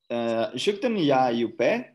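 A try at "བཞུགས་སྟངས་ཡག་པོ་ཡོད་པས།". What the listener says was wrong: Don't mix it though. Say ja, not ya. Shukten ya yupe. Ja, ja, ja. Just like that. You can't say ya Rastafari. Okay, shukten ja yupe.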